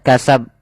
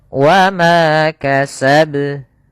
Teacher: cara membaca qalqalah juga hati-hati jangan sampai tidak dipantulkan, misalnya kasab, atau yang kedua yaitu dia ditambahkan hamzah, misalnya kasab. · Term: qalqalah kubra